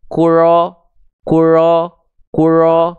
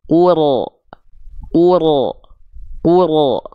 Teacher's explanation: takrir itu adalah Getaran yang dilafalkan pada huruf ro tapi tidak terlampau berlebihan cukup sedikit saja tapi walaupun sedikit tetap tegas lugas jelas